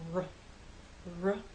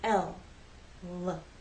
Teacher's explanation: L the sides of your tongue are more up for R the lips are more rounded for R they're more relaxed with l